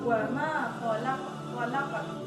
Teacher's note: Wa ma khalaqat, di situ ada qalqalah, jadi dipantulkan ya membacanya